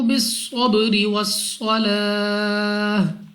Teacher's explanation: स्वाद मुस्तालिया में से है, मोटा पढ़ेंगे मुंह और आवाज को खोलकर। · रा के नीचे जेर, रा को बारीक पढ़ेंगे।